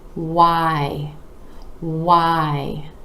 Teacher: you want to really round your lips for that sound then the jaw dropping down and up for the eye